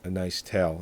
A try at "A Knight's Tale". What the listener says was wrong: Knight's Tale, not A Nice Tale. It sounded like Nice Tale.